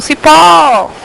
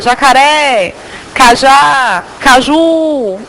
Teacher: Vejam que em todas essas aqui, a última sílaba é a que mais se prolonga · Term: oxítona